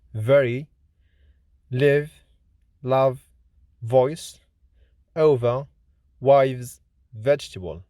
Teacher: V is voiced, lenis, labiodental, fricative consonant